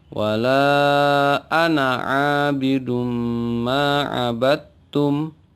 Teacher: ini pengecualian kalimat atau kata Ana maka dibaca pendek tidak berlaku hukum mad tabi'i